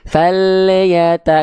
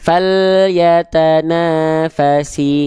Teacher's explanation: lam sukun suka memantul karena lidahnya keburu turun duluan belum tuntas makhrajnya